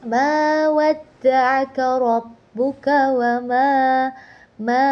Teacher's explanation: Di situ terdapat madobi'i alif. Karena alif yang didahului oleh huruf yang berbaris fathah maka dibaca dua harakat.